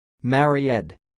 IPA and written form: ˈmɛr.id (married)